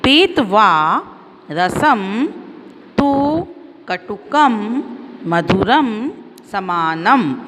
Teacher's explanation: ऊपर जो बिंदी होती है उसको हम संस्कृत में अनुस्वार कहते हैं। तो उसका उच्चारण कैसे करते हैं हम ध्यान से देखिए। पीत्वा रसम तु कटुकम मधुरम समानम। म की ध्वनि आती है उसमें।